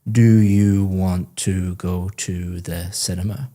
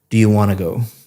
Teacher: Want to go sounds like one word, want to go, because you're connecting all the speech up. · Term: connected speech